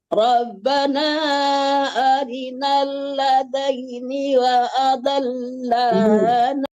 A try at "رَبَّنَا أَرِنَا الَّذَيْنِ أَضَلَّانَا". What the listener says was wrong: ditambah lagi wa adal. Nggak ada wa adal, tapi adal aja. Barusan ditambah lagi wa adal. Rabbana arinal ladaini adallana minal jinni wal ins.